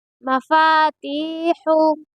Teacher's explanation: اور یہاں پر یا مدہ ہو رہا ہے کیونکہ یا ساکن سے پہلے تا کے نیچے زیر ہے، اس لیے یہاں پر یا مدہ ہو رہا ہے، اور یا مدہ ہونے کی وجہ سے تا کو تھوڑا کھینچ کر پڑھیں گے اور ہا کو درمیانی حلق سے ادا کریں گے